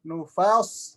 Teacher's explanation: Sodnya tebal dari semenjak fas, semenjak sukunnya sod, ya.